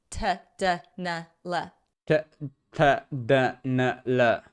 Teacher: our sounds, T, D, and L, are located a bit more forward, just behind the front teeth